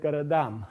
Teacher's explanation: you get garadam, with the stress shifting to the end, because this is a suffix that demands stress